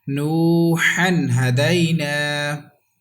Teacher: There is waw madda without, we have to stretch equal to one alif, and there is izhar because ha is halki letter and it has come after tanween, that's why without gunna